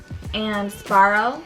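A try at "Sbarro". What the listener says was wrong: Why do we pronounce the B as a P though?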